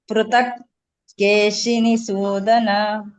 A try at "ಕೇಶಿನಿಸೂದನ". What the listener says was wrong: ಅಲ್ಲಿ ಸೂ ಇದೆಯಲ್ಲ ಮಾತಾಜಿ, ಅಲ್ಲಿ ಸ್ವಲ್ಪ ಬದಲಾವಣೆ ಮಾಡ್ಕೊಳ್ಳಿ. ಶೂ ಆಗ್ಬೇಕು, ಅದು ದೊಡ್ಡ ಷಟ್ಕೋನ ಶ ಆಗ್ಬೇಕು. ಕೇಶಿನಿ ಶೂದನ. ಶೂ ಪ್ರಾಕ್ಟೀಸ್ ಮಾಡ್ಕೊಳ್ಳಿ ಹೇಳಿಕ್ಕೆ. ಸ ಶ ಶ ಹೇಗೆ ಬರುತ್ತೆ ಅನ್ನೋದನ್ನ ನೋಡ್ಕೊಳ್ಳಿ.